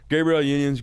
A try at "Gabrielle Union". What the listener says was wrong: It does sound like you're saying Gabriel. Gabrielle.